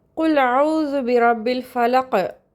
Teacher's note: காஃப் appear ஆகிருக்கு, bounce பண்ணி, அதாவது கல்கலா பண்ணி ஓதணும்